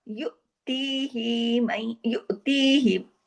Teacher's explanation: ही को ज्यादा नहीं खींचना है, ये खड़ी जेर नहीं है, हाजिर ही बस एक हरकत, लेकिन ती को दो हरकत खींचना है , क्योंकि ती के साथ या मद्दा है, युतीही मई यशा,